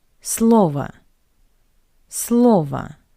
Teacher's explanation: in the singular, the last O is unstressed, that's why we pronounce it as a, слово. But in the plural, we change the stress.